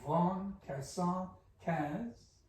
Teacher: Von Kasan Kaz is the first foot. Long, short, long, long.